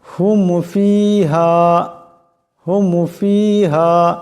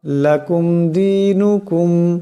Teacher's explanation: এই মিম সাকিন কে বেলা গুন্না ইজহার করিয়া পড়তে হবে গুন্না ছাড়া পড়তে হবে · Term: ইজহারে সাফবি